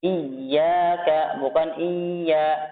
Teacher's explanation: Iya, bukan iya, tapi dihentakan, dijelaskan tasydidnya. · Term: naber